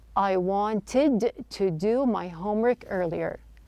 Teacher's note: Now notice that the T sound in the word wanted, the T is dropped. This is not an uncommon practice when the T follows an N.